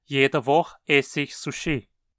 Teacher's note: se o verbo terminar com o som de “e”, esse “e” é assimilado e desaparece quando “ich” se torna enclítico